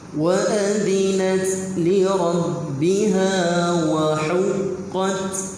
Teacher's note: Huruf ta yang mati ketika waqaf dia ada sifat hamas. Hamas iaitu melepaskan.